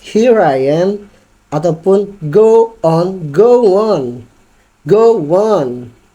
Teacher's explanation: itu vocal to vocal itu mengalir dengan jelas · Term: connected speech